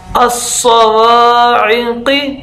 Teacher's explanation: स्वाद जो है वो मोटा होता है और सीटी की तरह होता है